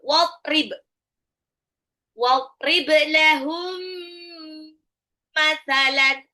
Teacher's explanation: Mim sukun ketemu mim harus ditahan ya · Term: idgham mimi